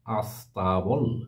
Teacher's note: আগে একটা আই এসে আলাদা একটা দল তৈরি করেছে আস তারপরে ট্যাবল